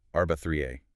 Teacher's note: It represents the letter ain. It's a deep guttural sound from the middle of your throat.